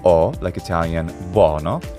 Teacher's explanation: we have the open mid back vowel